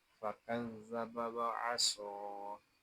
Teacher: زبر وا، عین زبر آ، وآ، صاد کھڑا زبر سو، وعصا، یہاں صاد کو ایک الف تک کھینچ کر پڑھیں گے کیونکہ صاد کھڑا زبر ہے